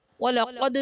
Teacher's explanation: وَلَقَدْ میں دال حرف قلقلہ ساکن ہے تو یہاں پر قلقلہ خوب ظاہر کریں گے۔